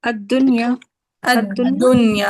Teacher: دال پہ شد بھی لگا دی ادغام کے نتیجے میں، اور لام یعنی مدغم کو ڈراپ بھی کر دیا